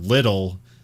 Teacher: which is something Americans do when there is a word with like T's in the middle of the word. We tend to say more of a D rather than a sharp T, and it's called a flap T.